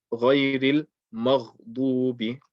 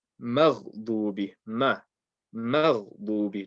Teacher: So in making the ghain heavy, you have to make sure you keep the mim light.